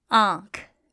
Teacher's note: remember, noon gunna is nasalized, so it's not pronounced as n, as noon is. And when it appears at the end of a word, then you leave off that dot.